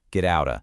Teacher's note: In American English, whenever a T sound is kind of trapped between two vowel sounds, it almost always transforms into a soft D sound. So get out of just melts together to become get outta.